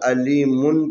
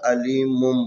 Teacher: ہم نے عرض کیا تھا نون کی آواز کو میم کی آواز میں بدلنے کے لیے نون ساکن یا تنوین کے بعد جب بھی با آ جائے نون کی آواز کو میم کی آواز میں بدلنا ہے۔ تو یہاں پر میم کے اوپر جو ہے نا دو پیش ہے اور اس کے بعد والا جو حرف ہے وہ با ہے، لذا ہم یہاں پر علیمن کی جگہ پر علیمم پڑھیں گے۔